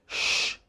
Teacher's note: tongue is rolled backwards lips are slightly rounded and there is greater pressure on the blade of the tongue